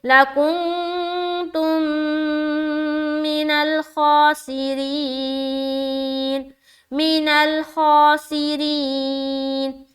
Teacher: ادغام شفوی کا قاعدہ آ گیا. میم ساکن کے بعد دوسری میم آ گئی